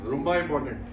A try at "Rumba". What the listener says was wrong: No, your Rumba sounded like Gemba.